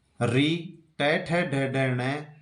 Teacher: मूर्धन्य ध्वनियां जीभ मूर्धा को स्पर्श करती है।